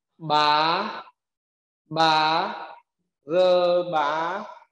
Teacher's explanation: Có âm hờ đằng sau chúng ta đọc như dấu sắc và kéo dài âm thanh